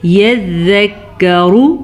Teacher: را کو پر پڑھ لیجیے گا، را پہ پیش ہے